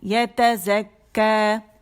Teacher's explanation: کاف مشدد ہے، اور اسے جماؤ سے ادا کریں گے